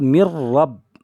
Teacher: میم کو را میں ملائیں گے اور نون کو چھوڑ دیں گے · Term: ادغام تام